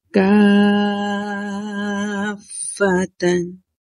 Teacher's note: فا کو سختی سے پڑھیں گے کیونکہ مشدد لیٹر ہے